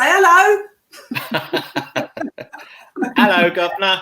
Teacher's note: that's an example of elision of the H sound, and that's a very Londoner thing to do.